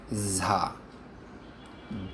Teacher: জ হতে শুরু হয়ে ভারী হয়ে উচ্চারণ হবে